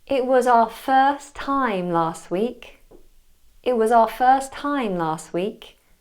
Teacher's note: I'm missing out the T in it first and last